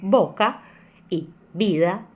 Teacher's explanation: Vamos começar com B e com V, que tem o mesmo som. Então a gente vai ter palavras como boca e vida, que vai ter o mesmo som.